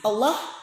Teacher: Allah lam jalalah dibaca tafhim tebal ya